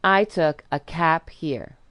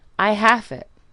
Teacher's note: devoicing the final sound, which is what it is called when a final voice sound is turned into a final voiceless sound. This devoicing makes the word cab into cap, as in, I took a cap here.